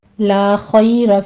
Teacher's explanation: خا کو پر پڑھتے ہوئے آگے یا لین ادا کریں گے